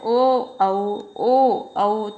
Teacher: ओ औ तो ये कहाँ से बोले जा रहे हैं, कंठ से और ओष्ठ से, तो ये कंठोष्ठ वर्ण कहलाते हैं